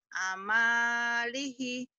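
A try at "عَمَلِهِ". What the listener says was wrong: Enggak ada yang panjang ujungnya doang.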